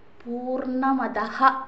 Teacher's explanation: നമ്മൾ ആരംഭിച്ചു അതിനുശേഷം പൂർണമതഹ എന്നുള്ള ശുക്ല യജുർവേദിയ ശാന്തിപാഠം കണ്ടു പലരും ചൊല്ലുമ്പോൾ അതഹ എന്ന് ചൊല്ലാറില്ല പൂർണ്ണമതഹ വിസർഗം ഉച്ചരിക്കണം